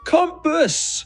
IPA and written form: ˈkʌm.pəs (Compass)